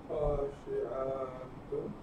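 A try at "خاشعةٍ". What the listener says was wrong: In the jar, khashi'a. What did you say? Tun is marfu'. Khashi'atin.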